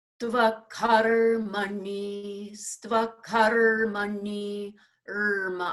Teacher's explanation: I'm almost putting more time on the R preceding the Ma